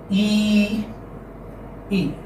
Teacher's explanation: And this is front close vowel, close position. And when you pronounce it, your lips are spread. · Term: long E